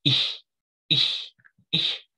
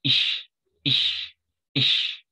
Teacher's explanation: There's a couple ways you could pronounce it. You could pronounce it in the back of your throat like ish, ish, ish, or you could pronounce it near your teeth like ish, ish, ish. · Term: aspirate tone